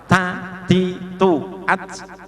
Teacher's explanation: bi bu AB gak boleh ba bi bu AB gak boleh tapi kalau ta harus banyak keluar nafasnya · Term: Hames